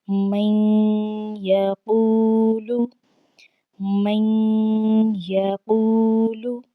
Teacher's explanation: ہم نے یہاں پر آواز کو ناک میں لے جاتے ہوئے میم کو ہم نے یا کے ساتھ ملا کر پڑھنا ہے